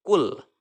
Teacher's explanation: Maka cara membaca huruf lamnya itu harus idhar, harus jelas. Kul, lamnya terdengar jelas.